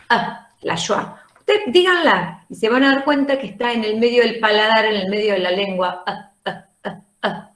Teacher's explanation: here okay in the middle can you see somewhere here yes not in the front not at the back but in the center